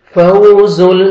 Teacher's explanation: زا کو زور سے پڑھیں گے لام کے ساتھ ملائیں گے